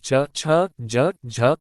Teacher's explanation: स्पर्श संघर्षी उच्चारण स्थान पर रगड़